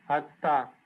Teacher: So the idea that here we have closure, we have burst over here, and the time between burst and vowel beginning is really short. And this is like characteristic for Russian or any other sound, when any other language, when you have this kind of stuff, that this part is really short and you don't have anything there.